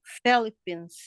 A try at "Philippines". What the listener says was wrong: Yes, it's Philippines. You say it's F, ha? Hindi siya P. Kasi Philippines. It's a Philippines.